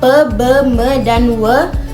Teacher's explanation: Berdasarkan titik artikulasi bahasa Indonesia memiliki bunyi bilabial pe, be, me dan w. Bunyi ini terjadi akibat pertemuan bibir atas dan bibir bawah